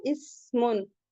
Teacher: सीन में सीटी की आवाज आती है